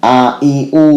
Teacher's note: Alif ini dikeluarkan dari tenggorokan terjauh